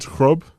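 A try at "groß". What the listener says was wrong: It's called the Schaffers S. It's called the Schaffers S. It's that B thing. It's an S. It's an S sound. Schaffers S.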